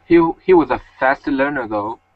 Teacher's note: The though is dropping tone going back, and you were reading it forward.